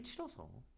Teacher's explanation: 으로 끝나는 어간이 모음 아나 어로 시작하는 어미 앞에서 탈락한 현상이래요